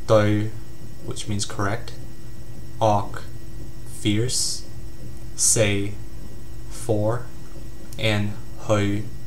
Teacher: it's a mid flat pitch tone, and it's unique to Cantonese. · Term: third tone